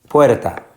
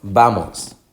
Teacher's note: la fuerza de pronunciación está en la penúltima en última sílaba no en la última sino en la penúltima